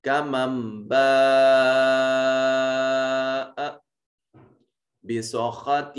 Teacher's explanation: خا اور طا دونوں کو موٹا کر کے پڑھیں گے، پر کر کے پڑھیں گے